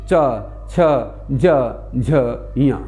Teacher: जीभ को देखिए एक ही जगह तालू के एक विशेष अंश से जुड़ कर के ही पूरी पंक्ति बोल जाते हैं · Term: तालव्य वर्ण